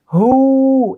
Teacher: যদি আমরা দীর্ঘ উকার দিই তাহলে হয়ে যাবে হু, এক আলিফ টেনে। তো হ দীর্ঘ উকার হু, হ দম্মা মামদুদা হু।